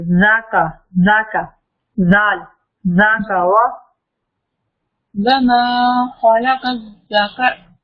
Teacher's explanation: زال کے اوپر سیٹی کی آواز نہ آئے